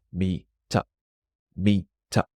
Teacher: the word meet also ends with a T, but that T joins the next word. So it's meet up, meet up.